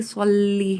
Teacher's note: صلی کا صاد گول کر کے پڑھا جائے گا، سلی نارملی کہا جاتا ہے، لیکن یہ درست ادائیگی اس کی صلی ہے۔